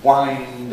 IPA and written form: waɪnd (wind)